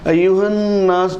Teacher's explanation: یہ جو آیت ہے سورہ بقرہ رکوع نمبر 3 کی پہلی آیت قاری صاحب نے تلاوت فرمائی، اور آپ نے بغور سنا ہے یا ایھا الناس اعبدوا، تو نون پر ایھا الناس، یہ جو تشدید ہے نون مشدد، ایھا الناس، تو نون پر جب تشدید آتی ہے، شدہ ہوتا ہے، تو نون کی آواز دوہری ہوگی اور غنہ ہوگا